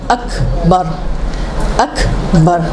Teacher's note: یہ حمزہ قطع ہے تو رکے گئے، قطع کر کے پھر بولیں گے